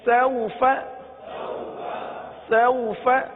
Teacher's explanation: جب یہ واولین ہے تو حروف لین کو بغیر کھینچے بغیر جھٹکا دیے نرمی کے ساتھ پڑھتے ہیں، لہذا اس کو نرمی کے ساتھ پڑھیں گے.